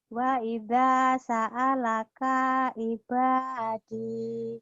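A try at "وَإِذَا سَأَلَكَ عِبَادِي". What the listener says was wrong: Yang panjangnya da sama ba doang sama di. Ini pendek nih, ayo lagi.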